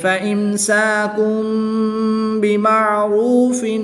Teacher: تنوین کے بعد حرف با ہے تو یہاں پر اقلاب ہوگا، تنوین کو میم سے بدل کر غنہ زمانی کر کے پڑھیں گے